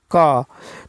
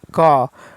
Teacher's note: अघोष अल्प प्राण का उदाहरण है क